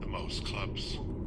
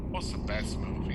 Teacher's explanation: the sounds are linked together and we cut off the t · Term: linking and deletion